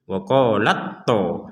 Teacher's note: Tapi kalau digabung wa qalat to. Jadi langsung ta ini bukan ditiadakan tapi masuk ke dalam huruf to secara sempurna.